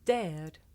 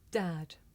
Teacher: difficult to tell the difference between this sound air and another sound the short vowel ah